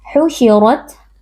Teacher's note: husyirat ro ro tafkim karena di sini huruf ro berharakat fathah kita baca tebal dengan mengangkat pangkal lidah